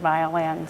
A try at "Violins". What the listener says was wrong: It sounded a little bit like violence, so it depends how fast you say it.